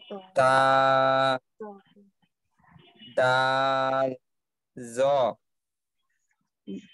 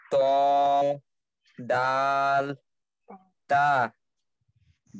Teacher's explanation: জিহ্বার সামনে উপরে 2 দাঁতের গোড়ার সঙ্গে লাগিয়ে উচ্চারিত হয়